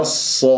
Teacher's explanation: الصاد مفخمة مرتبة أولى لأنها مفتوحة بعدها ألف والصاد من حروف الصفير الص وليس الصو الصو لا تكور الشفاء أحبتي فيتشوه الصوت عندنا